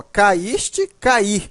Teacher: O I é forte nos dois casos. O I está formando hiato. É a segunda vogal do hiato está em outra sílaba, só que a diferença está bem aqui nessa última parte.